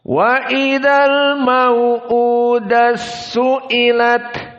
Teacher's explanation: ta dari tak marbutoh idgham kepada Sin yang setelahnya